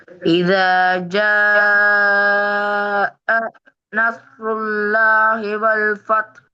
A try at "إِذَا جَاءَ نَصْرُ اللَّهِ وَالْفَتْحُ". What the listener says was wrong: ஜ என்று நிக்க கூடாது, நிக்கிறது பிழை, சேர்க்கணும். இத ஜ நஸ்ருல்லாஹி வல் ஃபத்.